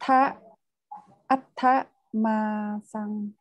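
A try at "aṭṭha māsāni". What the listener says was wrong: Yeah, đúng rồi.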